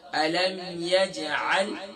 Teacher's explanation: जीम पर कलकला होगा